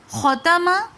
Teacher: خو موٹے حروفوں میں سے ہے اس لیے ہم اس کو تھوڑا واضح کر کے اور موٹا پڑھیں گے